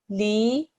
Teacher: the lam with the kasra, which is normally li, gets stretched out for 2 seconds because of the ya madda, li, and then because of this sign, it gets stretched out even longer, so it becomes li.